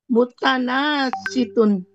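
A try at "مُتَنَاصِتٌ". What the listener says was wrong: Nggak panjang, mutanas situn, nggak panjang.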